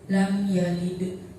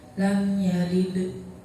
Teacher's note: Di situ ada mim mati bertemu dengan salah satu huruf idhar syafawi yaitu ya, maka cara bacanya jelas.